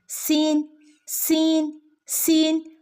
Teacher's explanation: സീനിന്റെ ശബ്ദം വരുന്നത് നാവിൻറെ അറ്റവും മുൻപല്ലുകളുടെ ഇടയും